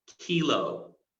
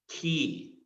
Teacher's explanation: The back of your tongue comes in contact with your soft palate, and that will produce the K sound.